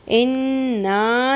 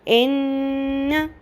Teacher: نون کی آواز کو ہم لمبا تو کریں گے لیکن نون کے اوپر جو زبر ہے زبر کو لمبا نہیں کرنا، ورنہ وہ کیا ہو جائے گی، زیادتی حرف مد اصلی بن جائے گا، لحن جلی ہو جائے گا.